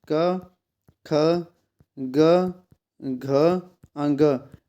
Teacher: कंठ है क, ख, ग, घ, अंग, ये आएंगे कंठ में और क वर्ग में आएंगे।